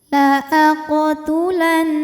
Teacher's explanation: Karena nunnya bertasydid, maka kita bunyikan dengung. Bunyinya ditahan, bunyi n-nya ditahan sampai ada suara masuk hidung kurang lebih 2 harokat. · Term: gunnah musyaddadah